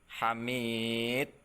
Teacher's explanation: Kalau di akhir sini qalqalahnya besar ya, qalqalah kubro. Jadi harus jelas ya.